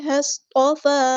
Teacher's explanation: فا پر کھڑا زبر ہے حرکات مد آئی ہے تو ایک الف کے برابر لمبا کریں گے